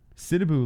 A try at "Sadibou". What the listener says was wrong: Sid, it's Sad. It's not Sid.